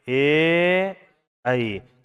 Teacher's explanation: कंठ तालु। कंठ और तालु दोनों से मिलकर के बोला जाएगा